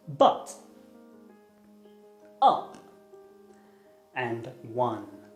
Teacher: its technical name is the mid back unrounded vowel